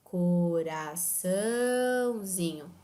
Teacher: essa vogal marcada pelo ti ela não marca tonicidade ou seja o til nessa palavra não está demonstrando a tonicidade a intensidade da sílaba ela está apenas marcando a nasalização da letra A